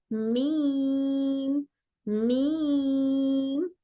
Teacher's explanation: हमारा मीम हमारे होंठों के ड्राई वाले पार्ट से, दोनों सूखे वाले हिस्से से मिलकर हर मीम अदा होता है। लेकिन बा में हम थोड़ा सा मजबूती के साथ होंठों को बंद कर रहे थे, तो मीम में मजबूती से बंद नहीं करेंगे, बल्कि हल्के, दोनों होंठ एक दूसरे से लाइटली टच होते हैं और नाक से भी आवाज निकलती है।